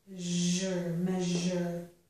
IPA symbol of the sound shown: ʒər